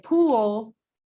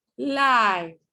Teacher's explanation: if I'm talking about a L that occurs at the end of a word, like in pool, my tongue could be a little bit more back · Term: dark